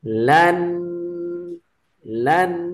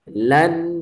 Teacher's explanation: dia ada dengung sikit dekat belakang